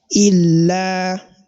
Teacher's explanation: you have to elongate the sound of this lam for the duration of only 1 second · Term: 2 haraka